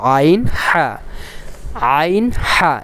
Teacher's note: আইন আর হা এর উচ্চারণটা একই মাখরাজ থেকে অর্থাৎ হলকের মধ্যখান থেকে